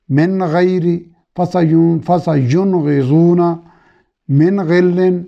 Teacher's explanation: ساری جگہوں پہ نون کو ظاہر کر کے پڑھا جا رہا ہے